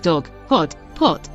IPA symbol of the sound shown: ɒ